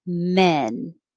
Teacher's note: the vowel is e like head so your jaw is more closed